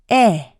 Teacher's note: The /ɛ/ is lax and short in duration.